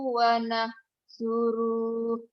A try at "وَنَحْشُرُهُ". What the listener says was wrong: Pendek. Wanah suruh. Nah, shin. Shinnya belum keluar ya. Utang kamu sin ya.